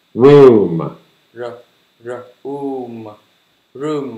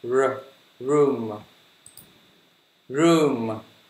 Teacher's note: âm R nó chu miệng hết cỡ nha